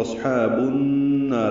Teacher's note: یہ ادغام شمسی ہے، اس لیے الف لام نہیں پڑھا جا رہا اور غنہ ہوگا چونکہ نون مشدد ہے. نا الف مدہ ہے، دو حرکات لمبا کریں گے. · نا الف مدہ ہے، دو حرکات لمبا کریں گے. را کی زیر کی وجہ سے را باریک پڑھیں گے